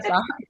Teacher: Le parole tronche, la voce cade sull'ultima sillaba